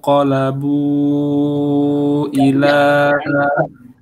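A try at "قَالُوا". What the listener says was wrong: Qalabu itu qaf ya. Yang ko itu jadi kaf. Yang ada hams ya. Enggak qaf itu enggak ada. Makanya saya bilang berdekatan sekali qaf sama kaf ya.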